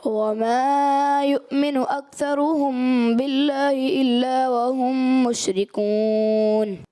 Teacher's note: وما کا الف دراز کر دیا اور اکثرہم میم ساکن کے بعد با آ رہا ہے یہاں پر، تو قاعدہ اخفاء شفوی کا لگے گا. انہوں نے یہاں پر اخفاء شفوی کیا تو لیکن اس کی مقدار کو پورا نہیں کیا.